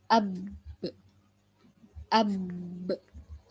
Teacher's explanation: huruf ba kalau di tasdid ini hentakkan dulu baru dipantul. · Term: ba tasydid